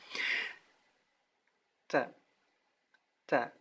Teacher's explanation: ta itu tidak sepenuhnya seperti huruf T, ya, dia ada hamasnya, ada seperti angin atau es di ujungnya, namun sangat sedikit, tidak terlalu banyak.